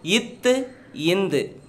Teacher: டேஸ் ஆகிய இருமைகளும் மேல்வாய் பல்லின் அடியை நாக்கின் நுனி பொருந்துவதால் பிறக்கின்றன